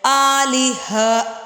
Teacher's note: گول تا وقف کے وقت یعنی ٹھہرتے وقت ہا کی آواز دیتی ہے